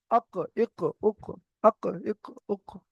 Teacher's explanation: জিভের গোড়া ওই সোজা উপরের তালুর সাথে লাগিয়ে উচ্চারিত হয় কফ। জিভের গোড়াটা ওই সোজা উপরের তালুর সাথে রাখবে, যেমন অক্ক, ইক্ক, উক্ক, অক্ক, ইক্ক, উক্ক। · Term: গোল কফ, কফের মাখরাজ